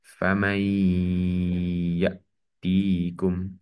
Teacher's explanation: Nun sukun bertemu dengan ya, maka menjadi idgham bigunnah yang dibaca dengung.